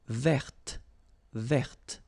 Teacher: I don't say te, but it's t.